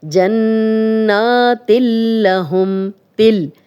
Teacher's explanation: جنات لہم، تل، اب تنوین کے بعد لام ہے تو تا کی بھی آواز لام میں جا رہی ہے اور دونوں کی کلیئر آواز آ رہی ہے، ادغام ہو رہا ہے لیکن غنہ نہیں ہو رہا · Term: ادغام بلا غنہ